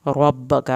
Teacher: रा को पुर करके पढ़ना है, काफ़ी ज़बर लंबी नहीं पड़ी जाएगी।